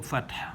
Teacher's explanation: The last letter ha, making the syllable hu with dhamma. We have to drop the dhamma because of pausing here and assimilate this ha that has a letter a together with this syllable fat, so it becomes fath.